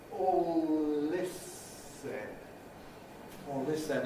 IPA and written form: ˈɔːl ˈlɪs sen (all this then)